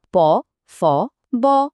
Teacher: ওষ্ঠ ধ্বনি প ফ ব। এগুলো বলার সময় তো স্পষ্টই দেখা যাচ্ছে যে দুটো ঠোঁট একসাথে কাজ করছে।